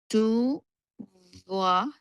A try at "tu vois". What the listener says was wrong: Correct.